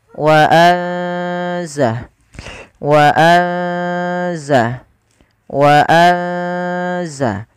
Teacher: ikhfa itu membaca di antara keduanya, yaitu dia menyamarkan saja, menyamarkan suaranya kepada huruf zai